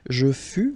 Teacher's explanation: keep in mind that final S is not pronounced. Tu fus, exactly the same thing, final S not pronounced.